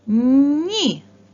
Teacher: звук і пом'якшує попередній приголосний звук